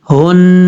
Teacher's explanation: نون کے اوپر شد ہے، شد ہونے کی وجہ سے تھوڑا سا فوکس کر کے پڑھیں گے، زور دے کے